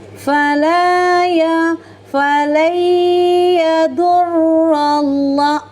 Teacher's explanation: huruf ro berharakat fathah dibaca secara tafkim tebal · Kemudian huruf lamnya ini lam lafaz allahnya. didahului oleh harakat fathah, maka lamnya dibaca secara tafkim tebal. Kemudian lamnya dibaca panjang dua harakat karena huruf lam ini berharakat fathah panjang.